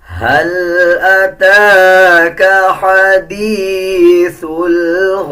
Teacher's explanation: تا نہیں پڑھا جائے گا, زیر نہیں پڑھا جائے گا, بلکہ تا کو ہا میں تبدیل کر دیں گے اور آدھا ہا پڑھا جائے گا